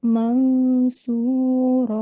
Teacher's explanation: the letter following noon sakin is a thick letter, sod. So we will make a thick gunna